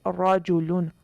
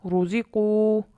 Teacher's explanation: را پر زبر، اس کو پر پڑھیں گے